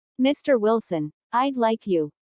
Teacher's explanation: Notice the rising intonation on Mr. Wilson, which is used to address someone.